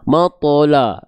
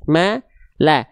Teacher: ma dan la-nya tipis, dua-duanya vokal A tipis